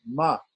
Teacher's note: This is not to be confused with the Anushwara, which is The M with a dot, this is not the M with the dot, this is the regular M, ma, pronounced on the lips